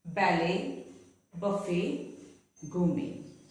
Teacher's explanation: words taken from French words which end with et, the T is not pronounced